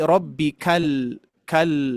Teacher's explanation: Huruf lam dominannya adalah tawasud sedikit mengalir. Ya, jangan sampai kita membacanya rbikal a'a rbikal tapi rbikal kal ngalir dulu sedikit ya.